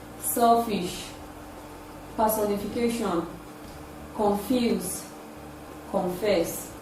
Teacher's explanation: this sound is produced with minimal vibration in the vocal cord it is produced with the upper teeth and the lower lip it is a voiceless labiodental fricative sound